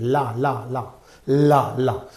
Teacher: produced by directing air flow around the sides of the tongue this is the this is going from the sides not stopping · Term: lateral consonant